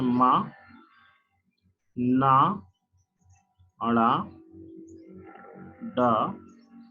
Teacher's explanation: वे ध्वनियां जो पूर्ण रूप से बंद करने के बाद तेजी से नासिका द्वारा निकलती है, नाक के द्वारा निकलती है तेजी के साथ, उसे नेजल साउंड कहते हैं अर्थात नासिकीय ध्वनि कहते हैं।